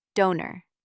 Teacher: The first part ends with a vowel. It's open, so O is long, like in Coke. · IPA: /oʊ/